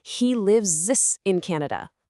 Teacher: It must be, "He lives in Canada and works in a bank." And here's a pro tip, because live ends in a voiced sound, that S actually makes a voiced z sound. So, when you're practicing, I want you to overemphasize that voiced z sound.